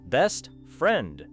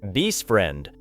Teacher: the final T may become difficult to hear.